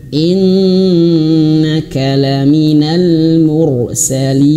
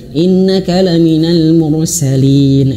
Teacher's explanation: huruf nun bertasydid atau mim bertasydid itu harus ditahan sampai dua harakat ya atau bahkan ada yang mengatakan sampai tiga harakat.